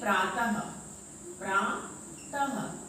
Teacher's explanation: क्या आता है जो अब हम विसर्ग आता है, विसर्ग का जैसे ये दो बिंदी, ठीक है, इसका उच्चारण हम किसकी तरह करते हैं, हा की तरह करते हैं। विसर्ग का उच्चारण हम कैसे करते हैं, हा की तरह करते हैं इसका उच्चारण।